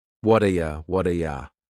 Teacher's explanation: that T at the end of the word what is going to change to a D sound.